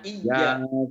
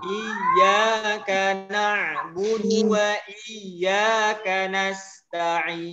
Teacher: Huruf ya tasydidnya agak ditekan sedikit ya, tapi jangan berlebihan.